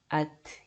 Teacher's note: Ketika dia sukun maka keluarin nafasnya sedikit sisa. Bukan jadi qalqalah ya, jangan at tapi harus at gitu ya. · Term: sifat hamasnya